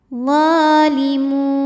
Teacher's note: cara bacanya do panjang dua harakat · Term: Mad Thobi'i muqadar